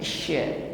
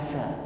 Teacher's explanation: pengucapan huruf shin disertai dengan angin yang menyebar. Sya, bukan asa ya.